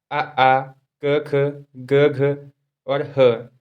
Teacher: कंठ्य वर्ण अर्थात जिनका उच्चारण कंठ से किया जाता है।